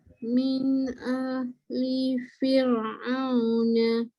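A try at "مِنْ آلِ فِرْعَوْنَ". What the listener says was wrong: Okay, jadi hamzah duduk sebelah alif. Panjang jangan baca min ali, tak cantik.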